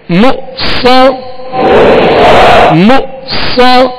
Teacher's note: صاد کو پر پڑھنا ہے اور صاد حروف مستعلیہ ہے، اس میں سیٹی کی آواز ہوگی